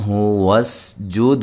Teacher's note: دال پہ قلقلہ کرنا ہے